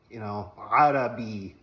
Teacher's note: The phonetic term is a voiced pharyngeal fricative